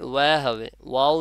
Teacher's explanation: ওয়াও বলার সময় দুই ঠোঁট থেকে উচ্চারণ হবে